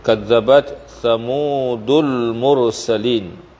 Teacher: Ra pada mursalin dibaca dengan tebal. Kita berhenti pada al-mursalin, dia menjadi mad arid lis-sukun ya. Panjangnya 2 atau 4 atau 6 harakat.